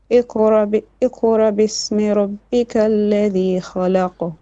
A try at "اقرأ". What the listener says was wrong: So now you're not pronouncing the hamza at all. So you should be able to do the hamza with a sukoon without adding extra air.